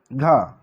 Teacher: घा का उच्चारण स्थान जो कि कंठ है, कंठ से उसका उच्चारण किया जाता है घा, यानी कि कंठ से उच्चारण होता है।